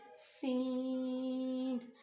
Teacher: सीन, सीन जो है इसमें सीटी की आवाज़ आना बहुत ज़रूरी है। अगर इसमें सीटी की आवाज़ नहीं आ रही तो इट्स मीन जो है आप इसका मुखरज गलत अदा कर रहे हैं।